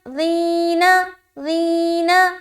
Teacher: تو ذال اور یا زیر ذی، تو یا ساکن سے پہلے زیر ہے یا مدہ ہوگا، یا لہٰذا کھینچیں گے۔